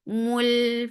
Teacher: La, he, for kasra give e sound. Mul, for dhamma circular lips attached with lam